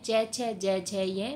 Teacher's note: च छ ज झ ये तालु से उच्चरित होने वाली ध्वनियाँ हैं